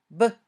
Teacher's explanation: When you say b, your vocal cords vibrate. It's a voiced sound.